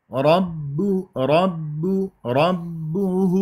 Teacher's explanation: الباء شديده مجوره اريد بعد الباء قويه